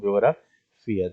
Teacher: la vocal débil es tónica, se acentúa automáticamente y hay una vocal fuerte átona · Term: hiato acentual